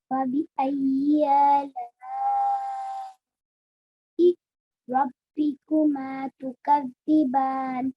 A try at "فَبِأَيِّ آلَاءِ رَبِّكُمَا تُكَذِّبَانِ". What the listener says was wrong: Okay, it just has to be quite long.